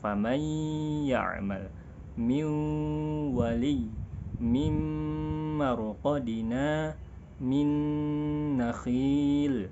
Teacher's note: gunnah akmal, gunnah yang paling sempurna, ditahan, yang paling panjang dan paling lama.